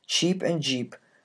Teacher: cheap and jeep are composed of a stop followed very quickly by a fricative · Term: affricate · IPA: [tʃ]